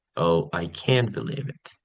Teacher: it's flat and and monotone with no emphasis or emotion investment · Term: boredom